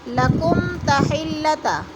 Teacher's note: میم ساکن کے بعد حرف تا آ گیا ہے تو ادھر اظہار شفوی غنہ نہیں کریں گے